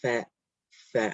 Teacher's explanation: Fa, pronounced from the edge of the upper front teeth and the wet part of the lower lip. So fa comes out when the edge of the top front teeth touches the inside of the bottom lip.